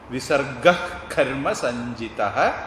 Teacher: அடுத்தது விசர்க்கம் இருக்கு. அடுத்தது வல்லினம் கா வருது. அப்போ ஜிஹ்வா மூலிய உச்சாரணம், அதாவது அஹ்னா மாதிரி சொல்லணும்.